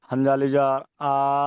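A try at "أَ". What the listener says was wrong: হামজা আলিফ জাবার কোথায়? হামজা জাবার।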